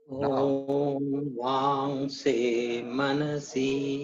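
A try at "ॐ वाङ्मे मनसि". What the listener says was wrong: Bang se nahi, bang me. Om bang me manasip. Now sip. Instead of si, you please pronounce sip.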